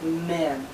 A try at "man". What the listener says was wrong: Listen, man. Men. Man. Ah. Man. Men. The difference is ah. Listen. Eh. Man. Men.